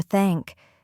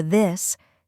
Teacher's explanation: For example, the th sound in thank or this. Gently put your tongue between your teeth and blow air for thank. Then for this, touch your tongue to your teeth and voice the sound slightly.